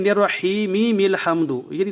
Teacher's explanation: تو یاد رکھیں، بعض لوگ غلطی کرتے ہیں اور پڑھ جاتے ہیں نررحیمی مل حمد، وصل کرتے ہوئے دو میمیں پیدا کر دیتے ہیں